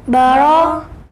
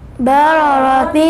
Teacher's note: را کے اوپر زبر ہے تو را موٹی ہوگی